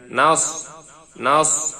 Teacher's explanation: সাদের উচ্চারণ ঠোঁট গোলাবে, উচ্চারণটি সুন্দর হবে, ফিস ফিস আওয়াজ বের হবে